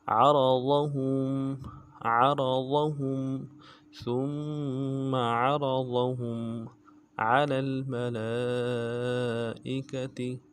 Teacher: میم کے اوپر مد عارض ہے، اس کو ڈائی الف کی مقدار میں کھینچیں گے